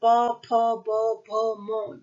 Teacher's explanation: होंठ क्या कर रहे हैं, आपस में टकरा रहे हैं